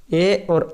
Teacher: ए और ऐ का उच्चारण स्थान कंठ और तालु से होता है। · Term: कंठतालु